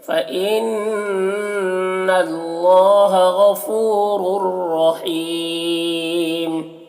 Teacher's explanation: غفو میں غین کو پر پڑھیں گے، حروف مستعلیہ میں سے فو میں واو مدہ سے ایک الف کے برابر کھینچیں گے۔ رر رحیم، یہاں پر دونوں را کو پر پڑھیں گے، اور یہاں پر ادغام تام ہو رہا ہے، تنوین کو را سے ملا کر بغیر غنہ کے پڑھیں گے۔ حیم میں یا مدہ ہے، اور یہاں پر وقف کریں گے تو پھر مد عارض وقفی ہوگا، تو اس کو اس طریقے سے پڑھیں گے۔ · فَإِنَّ نون مشدد ہے، غنہ کے ساتھ میں پڑھیں گے، اور یہ مشدد حرف ہے تو پیچھے والے متحرک حرف حمزہ سے مل کر پڑھا جائے گا۔